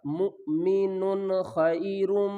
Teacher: آگے تنوین کے بعد حروف حلقی میں سے خا آ رہا ہے تو ہم کیا کریں گے یہاں پر اظہار کریں گے